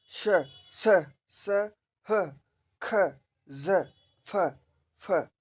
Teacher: इनको आप बोलेंगे तो इनमें आपके जो वायु निकलेगी वो घर्षण करती हुई निकलेगी। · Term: संघर्षी व्यंजन